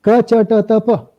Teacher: Ka is at the back of the throat. Cha comes forward. Ta in front.